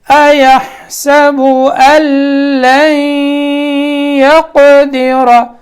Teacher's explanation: ادغام ہوگا یہاں غننے کے ساتھ